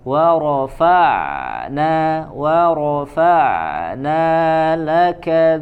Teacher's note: huruf ain dia mengalir suaranya tanpa dipantulkan, bukan wa rafa'na jangan dipantulkan tapi dialirkan saja.